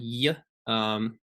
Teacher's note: the Y sound will always be a palatal glide y. There's no the j sound is like a DZ in the Latin script, so that's a j.